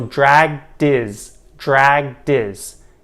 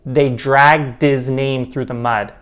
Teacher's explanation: The H in his isn't emphasized, so it's often dropped. And as a result, the D in dragged kind of attaches to the next word, this new word is, rather than his.